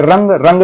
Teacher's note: है आपको तो ये भी अनुस्वार है और रंग देखिए रंग रंग भी बोलने पर आपका लग रहा है जैसे नाक में बोल रहे हैं तो अनुस्वार का उच्चारण कहां से किया जाता है दोस्तों नासिका